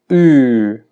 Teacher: En inglés moderno, esta vocal se ha transformado en una vocal casi central o central. Esto quiere decir que la lengua pasó de estar retraída muy en la parte posterior a estar ahora mucho más cercana a la parte central.